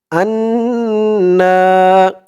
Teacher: হামজা দিয়ে নুন ধরবে ওয়াজিব গুন্না